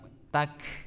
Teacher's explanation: Pangkal lidah bertemu dengan langit-langit yang keras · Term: huruf Kaf